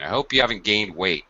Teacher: It goes down. Your pitch goes down at the end. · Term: final falling intonation